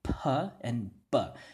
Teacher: You can understand why it's a bilabial because it uses both of your lips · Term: bilabial stop